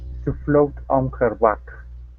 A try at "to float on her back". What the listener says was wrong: watch your tongue on the word her instead of hair her push the tongue down